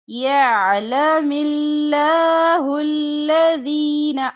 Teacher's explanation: عین وسط حلق سے ادا ہوتا ہے